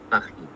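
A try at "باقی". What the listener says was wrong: It's not a khe sound though. It's a ka sound, like ka, like Camera, but a bit deeper, coming from the throat, like deep from.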